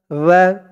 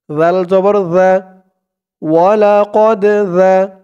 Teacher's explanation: জালের উচ্চারণটা একদম নরম পাতলা করতে হবে। জিহ্বার মাথা উপরের দাঁতের মাথার সাথে লাগবে জালের উচ্চারণ।